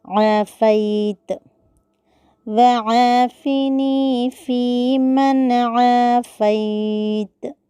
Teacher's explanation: عافیت میں عین کی جگہ حمزہ پڑھنے سے بچنا ہے یا لین کو مجہول ہونے سے بچانا ہے۔